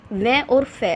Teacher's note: उसके बाद वै को देखिए, जब बोलते वक्त वै हम बोल रहे हैं तो हमारे दांत और होठ मिल रहे हैं, इसीलिए इसका उच्चारण स्थान दंतोष्ठ्य, दांत और होठों के मेल से लिखा गया है। वै और फै, आगत ध्वनि का जो नुक्ता के साथ जो फै आता है वो दंतय औष्ठ्य से बोला जाता है